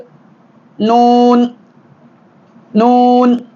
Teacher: நுனினாவின் முதுகு மேல்முரசில் இணைகிற பொழுது நூன் நூன்